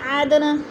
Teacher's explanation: فی جناتی، نون مشدد ہے، سختی سے جما کر پڑھیں گے. عدن، دال ساکن ہے، حروف قلقلہ میں سے ہے اور ہلا کر پڑھیں گے